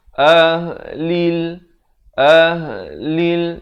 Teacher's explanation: Lam baris kasrah bunyi li. Bukan bunyi le. Bila bertemu lam jadi lil.